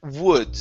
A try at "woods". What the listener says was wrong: Start off with the oo sound. So here you're saying uds. Instead of it's oo, woods.